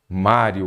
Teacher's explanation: Mário, ela é uma paroxítona, a sílaba tônica é a penúltima, e terminou em ditongo crescente.